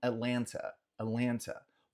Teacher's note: pode ser que você ouça alguém pronunciar esse último T, mas não pronunciar o primeiro, e falar um Atlanta, Atlanta.